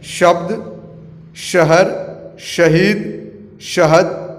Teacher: जब जुबान ऊपर की ओर मुड़कर तालु से मिलकर इस श का उच्चारण होने के कारण इसे तलावे श कहते हैं।